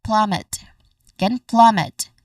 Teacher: The stress is on the first syllable plum.